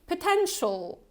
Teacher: And you also have this schwa sound in the first syllable. So it's not potential.